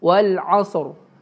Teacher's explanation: Terus yang kedua, yang kelima tuh ro-nya kalau mau diwakafkan jadi sukun wal asr. Kan ro-nya dibaca tafkhim ya, tebal.